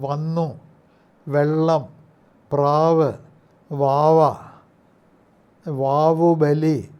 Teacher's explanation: ഉച്ചരിക്കുന്ന സമയത്ത് താഴത്തെ ചുണ്ട് മുകളിലേക്ക് പോകുന്നു എന്നിട്ട് അത് മുകളിലത്തെ പല്ലുകളില് പൽനിരയിൽ മേലുളിപ്പല്ലുകളില് ഭാഗികമായിട്ട് തൊടുകയാണ് ചെയ്യുന്നത് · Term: വകാരം